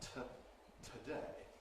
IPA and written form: tʰəˈdeɪ (today)